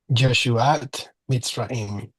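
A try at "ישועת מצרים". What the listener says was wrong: Make sure not to pronounce the letter Yud like a J. I know that in some dialects, the J and Y are kind of interchangeable. We need to pronounce the Y like the letter yes.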